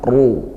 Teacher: kita baca tafkhim ditebalkan ya. Nah, karena tebal maka kita naikkan pangkal pangkal lidahnya